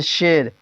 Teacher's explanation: یا مجہول جو یا کھینچ کر نہ پڑھی جاتی ہو